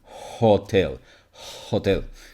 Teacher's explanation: this sound is a glottal fricative so it's basically a friction that is made with your throat